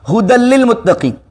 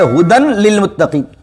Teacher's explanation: دال کو مرج کر دیا لام میں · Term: ادغام